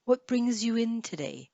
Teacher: Notice there's the S here, brings you. The S joins to the Y.